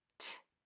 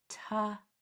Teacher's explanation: Both of those sounds are voiceless. No vocal cords should be used when making those sounds. The T is only air when it's pronounced.